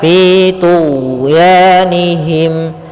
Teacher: huruf ghain sendiri dia bukan huruf qalqalah, ya, akan tetapi dia huruf rikhwah, yang dia juga termasuk huruf jahar.